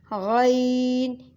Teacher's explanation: اس کو ہم موٹا کر کے پڑھیں گے اور اس کو بھی ہم حلق سے ہی ادائیگی کریں گے